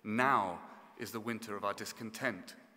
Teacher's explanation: breaking with the expected rhythm by placing the emphasis on the first syllable